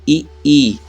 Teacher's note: जीव का बीच वाला हिस्सा कहां पर जा रहा है ऊपर जा रहा है यानी ताल पर जा रहा है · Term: तालव्य